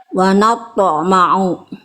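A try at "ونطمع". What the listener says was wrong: Oke, yang itu lebih bagus. Cuman jangan dijeda. Langsung. Wa natma'u.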